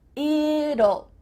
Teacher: when we say the contraction it will, we kind of add a little U sound before the L. It kind of sounds like U-L-L.